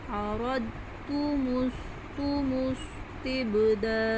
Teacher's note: أَرَدْتُمُ اسْتِبْدَالَ، جلدی، رو جلدی لیکن رو موٹا پڑھیں گے، أَرَدْتُم، دال کی آواز پلٹ کے آئے گی · اب سین میں باریک سیٹی ہے، تا جلدی سے پڑھیں گے، با حروف قلقلہ میں سے آواز پلٹ کے آئے گی